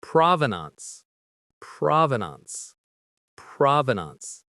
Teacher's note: The stress is on that first syllable, prov.